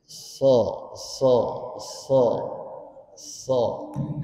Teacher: Sod bukan huruf bibir, jadi so, so, so, so, hanya permainan lidah. Karena sod itu, salah satu sifat sod itu adalah isti'la.